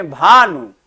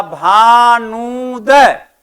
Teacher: न वर्ण पर दीर्घ ऊ की मात्रा का बलाघात पड़ रहा है